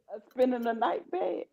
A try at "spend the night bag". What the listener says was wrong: No, spend the night. You saying too many syllables. Spend the night. Yeah, that's spend the night bag.